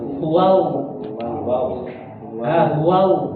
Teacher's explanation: Tapi pangkal lidahnya diangkat jadi suaranya tebal. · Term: huruf lam